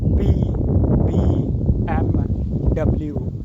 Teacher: to produce these sounds our upper and lower lips touch to each other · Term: bilabial sounds